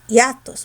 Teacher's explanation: Mayor fuerza está en la A, no en la I. Entonces, hiatos es una palabra grave terminada en S y no la vas a tildar.